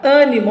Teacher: o som aqui é meio que mais fechado, nasalado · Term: vogal é fechada